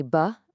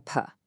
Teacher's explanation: Just look at the difference between a buh and a puh. It is a simple toggle switch of that voicing feature. Everything else, the bilabial place, the stop manner, is perfectly identical.